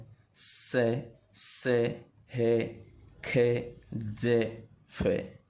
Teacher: इनको अपन जैसे बोल रहे हैं ना, तो घर्षण करती हुई अपनी वायु बाहर निकल रही है। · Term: संघर्षी व्यंजन